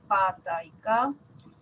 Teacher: Y las sordas, tenemos las oclusivas sordas pa, ta y ka